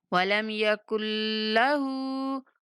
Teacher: ہا کے اوپر الٹا پیش ہے تو ہا کو تھوڑا سا کھینچ کے پڑھیں گے